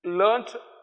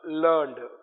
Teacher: T sound has become D sound.